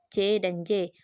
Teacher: arus udara ditutup rapat tetapi kemudian dilepas secara berangsur-angsur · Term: bunyi africative